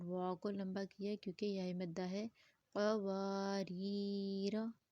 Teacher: قاف کو لمبا کیا کیونکہ واو مد ہے، اور واو کو لمبا کیا کیونکہ یا مدہ ہے۔